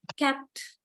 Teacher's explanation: Yeah, now this is the mark for unreleased. Unreleased before another stop consonant or word finally.